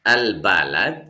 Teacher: Ada alif lam ketemu huruf ba, lamnya jelas. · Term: alif lam qamariyah